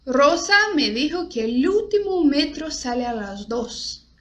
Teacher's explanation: não existe o O e O no espanhol. É sempre o som fechado. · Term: O fechado